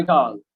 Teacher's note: So girl এখানে long, কিন্তু mouth is little open.